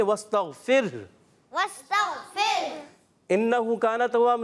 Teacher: اور جب وقف کریں گے واستغفر انہ کان توابا, نون مشدد ہونے کی وجہ سے ایک الف کا غنہ